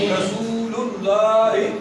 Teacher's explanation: رسول اللہ پہ وہ مدہ تھوڑا لمبا کرنا ہے. رسول اللہ الیکم یا لین, یا سے پیچھے زبر آ گئی, یا ساکن ہے, لین ہے, نرمی کریں.